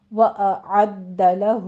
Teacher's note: وَأَعَدَّ لَهُ، آ اور آ یہ 2 ساؤنڈ الگ الگ سے ہیں، ایک ہے حمزہ آ، ایک ہے عین۔ عین کو وسط حلق میں سے ادا کرنا ہے آپ نے، اور دال کے اوپر تشدید ادا کرنی ہے۔ · ہو میں پھر مد صلہ صغریٰ ہے، 2 کاؤنٹ کرنا ہے۔